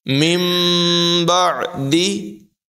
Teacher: نون ساکن کے بعد حرف با ہے لہذا اقلاب ہوگا یعنی نون کو میم سے بدل کر ادا کریں گے